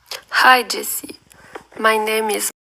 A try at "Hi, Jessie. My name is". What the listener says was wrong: So you can kind of hear it here, maybe. French speakers will be like duh, duh, duh, duh, duh, duh, duh, duh, duh, duh, duh, duh, which is normal because you're taking your intonation from French and putting it in English.